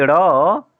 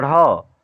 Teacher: दोनों सघोष हैं, लेकिन ड़ अल्प प्राण है और ढ़ महाप्राण है।